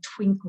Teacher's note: If you listen to the word, we say twinkle, we go twinkle, twinkle. So the emphasis is on the first syllable.